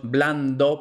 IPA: ˈblan.do